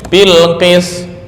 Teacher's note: Kalau dibaca bil qis, lah toknya kemana? Itu membuang tok namanya